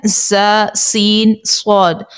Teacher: زبان کی نوک جب نیچے کے 2 دانتوں کے اندرونی کنارے سے لگے تو زا، سین، صاد ادا ہوگا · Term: حروف صفیریہ